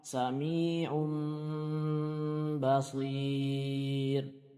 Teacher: Adapun secara istilah iqlab adalah membalikkan suara nun sukun atau tanwin menjadi mim. Jadi suara nun sukun atau tanwinnya dibalik menjadi mim.